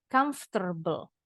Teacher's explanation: Kalau orang Amerika ada bunyi R-nya nih sedikit di belakang. Dibacanya R-nya pindah ke sini.